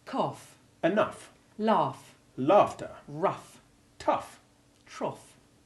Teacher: a more frequent sound is the F sound that it sometimes has, rather than being silent, when following OU or AU